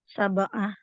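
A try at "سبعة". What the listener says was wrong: Wah, ini sobah jadi tulisan ini, Bu. Sobah pagi-pagi artinya. Sab'ah. Sab'ah gini tulisannya. Ini jadinya sobah ini mah. Sobah. Kemudian nggak ada hak juga.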